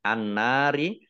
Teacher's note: masuk ke huruf berikutnya yaitu Nun ditandain Nun nya ada tasydidnya Nun tasdid dibaca Al ghunnah atau mendengung ditahan 2 harokat